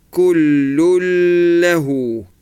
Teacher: This lun here, the tanween, dhamma tanween, you read it only as a dhamma, and then go into the lam with a shadda straight away